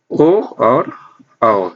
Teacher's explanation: ओ और औ, ये दो वर्ण हमारे कंठोष्ठम, दो वर्ण से मिलकर उच्चारित होते हैं, कंठ और ओष्ठ। इन दोनों वर्णों को स्पर्श करके उच्चारित होता है, इसलिए इनको कंठोष्ठ, उच्चारण स्थान इनका हो जाएगा कंठोष्ठ।